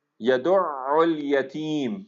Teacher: تا کو ہم لمبا کر رہے ہیں کیونکہ یا ساکن آ گیا